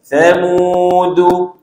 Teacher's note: sa ni pun makhrajnya kena keluar lidah sikit